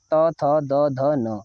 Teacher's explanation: इनका उच्चारण स्थान दंत होता है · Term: त वर्ण